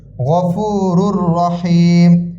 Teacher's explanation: এই র কি হবে গুন্না ছাড়া মিলিয়ে পড়তে হবে